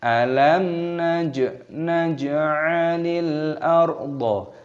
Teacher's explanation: Alam jimnya berharokat sukun. Ini dibaca jimnya berharokat sukun dan dikolkolah, dipantulkan suaranya